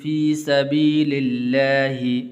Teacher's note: لفظ اللہ کو پر نہیں کرنا بلکہ باریک کر کے پڑھنا ہے